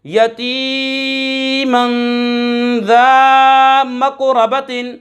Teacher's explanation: یہاں پر 2 زبر کی تنوین کے بعد ذال حرف اخفا میں سے آ رہا ہے، غنہ کر کے پڑھیں گے